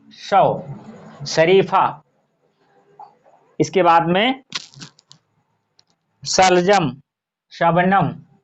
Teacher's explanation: ये जितने वर्ण हैं ये आपके तालु से उच्चरित होते हैं, इसीलिए इसे तालव्य भी कहा जाता है।